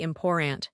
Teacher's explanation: Americans often say important. They skip the second t. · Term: glottle stop, glottal stop